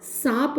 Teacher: सर्प में अनुनासिकता का प्रवेश भी हुआ है और सांप बन गया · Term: स्वतः अनुनासिकता